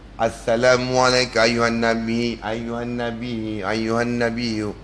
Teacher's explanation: Nun bertasydid. Wajib al-ghunah.